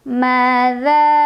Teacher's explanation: Madza za juga mad tabi'i karena ada alif sebelumnya fathah. Cara membacanya dipanjangkan zalnya 2 harokat.